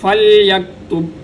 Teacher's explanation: کما علمہ اللہ فلیکتب، با پہ قلقلہ ہوگا، فلیکتب، کاف باریک اور با پہ قلقلہ